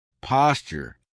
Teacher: That's because a T and a Y sound together make a CH sound, like in Tuesday and tuna.